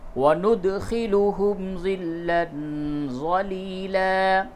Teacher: وند، دال ساکن پہ قلقلہ کیجئے